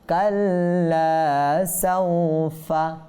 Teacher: সাউফা ওয়াও সাকিন পূর্বে জবর আসছে, অর্থাৎ এখানে লিন হওয়ার কারণে টানবো না